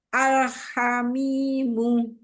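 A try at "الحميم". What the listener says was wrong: Tahan lagi lam sukunnya. Al-ha, ketemu ha, lamnya mengalir bainiyah. Jangan terputus. Bagus, jadi jangan terputus.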